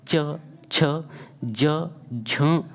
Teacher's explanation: वायु जो है संघर्ष यानी कि घर्षण के साथ में बाहर निकलती है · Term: स्पर्श संघर्षी व्यंजन